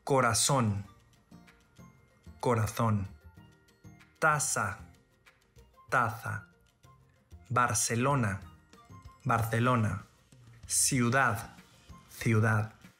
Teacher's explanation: in Spain, the letter Z is pronounced as TH, as an English word thing, but in all other regions is pronounced as S. In Spain, the letter C before E or I is also pronounced as TH, but in all other regions is pronounced as S.